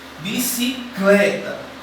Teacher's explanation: Quando eu pronuncio bicicleta, eu vou ter apenas uma sílaba que eu vou botar um pouco mais de força, que é o clé. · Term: sílaba tônica